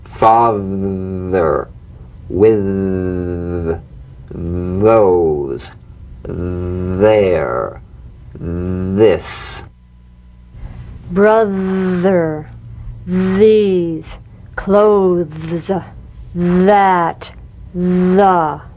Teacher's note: slip the rim of the tongue between the teeth and sing feeling a buzz or vibration feel that vibration on the tongue outside the teeth you've got · The voiced tongue point to teeth fricative th. The vibrant sound of the voiced th has a quality much like that of the v.